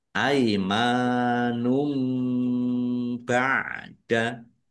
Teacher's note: Dummah tanwin bertemu dengan huruf bacaan iqlab dibaca membalik. Tanwinnya dibaca mim dulu.